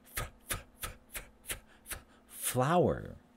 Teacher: And voiceless labial dental fricative